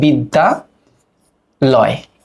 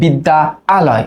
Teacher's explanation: দুইটা আ, এই স্বরধ্বনি যখন মিলে যায়, আমরা জানি একটা আ স্বরধ্বনির আবির্ভাব ঘটে, মানে দুইটা মিলে একটা হয়। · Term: আ ধ্বনি যখন মিলে যায়